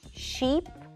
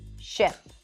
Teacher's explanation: how to distinguish between the two vowel sounds – the tense /i/ and the lax /ɪ/